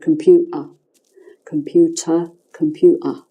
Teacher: I'm missing out the team and doing a glottal in my throat instead